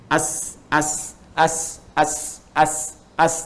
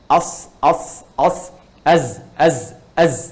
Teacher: Nah, untuk sin dengan sad itu makhrajnya itu bersamaan, termasuk juga zai, ya, termasuk zai. Sin, sad dengan zai itu di ujung lidahnya